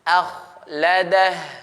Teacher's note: ada huruf kha, sebelumnya fathah, maka kha ini dibaca tebal. Nah, dia isti'la. · hati-hati tetap dijaga pada huruf hamzahnya. Ini tetap dibaca tipis.